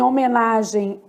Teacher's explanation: esse M que apareceu Ele tem som de i logo ele é uma semivogal